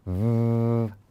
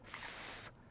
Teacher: teeth on the bottom lip so again like that so for the letter V is voiced that means you make a sound v v the letter F is unvoiced or silent